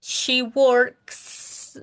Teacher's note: poco difícil porque nosotros no decimos ks Entonces ahí es como Suena la k y inmediatamente ese sonido le ponemos una s